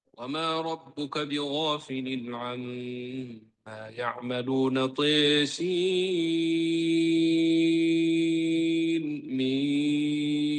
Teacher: Jadi nunnya jelas. Sin mim dibaca izhar.